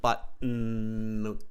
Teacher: It's more nasal, I think, the T than guttural. So it's nasal.